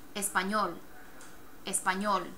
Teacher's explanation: emphasis is on the last syllable